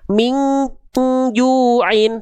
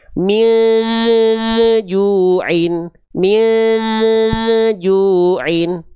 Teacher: Min juin ketika ditutup dia masih nyisa suaranya. Dia hanya berubah saja tidak sampai hilang. Ya, itu ikhfa yang terjadi pada kondisi ini.